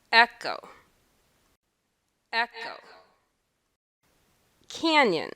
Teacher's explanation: The stress syllable is said a little louder, and the vowel is held for a longer time. In both the words echo and canyon, the first syllable is stressed.